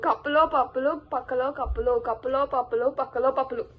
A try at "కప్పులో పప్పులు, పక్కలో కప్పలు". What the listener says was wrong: రాంగ్ చెప్పినావు. పప్పులు కాదు, లాస్ట్ కప్పులు. కప్పలు, కప్పలు